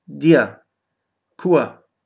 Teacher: Am Silbenende wird das R nach einem langen Vokal außer A als A ausgesprochen.